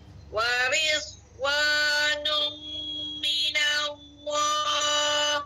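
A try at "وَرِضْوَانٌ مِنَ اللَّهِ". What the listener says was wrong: Ha tidak ada anginlah pada huruf D tu.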